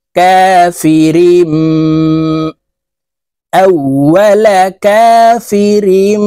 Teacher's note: তানউইনের পরে ইকলাবের হরফ বা আসছে তাই এই মিম দ্বারা পরিবর্তন করিয়া গুন্নার সহিত পড়ব